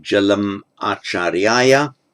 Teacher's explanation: where you have a word ending in an M followed by a vowel, it's pronounced and written as a full consonantal M with sandhi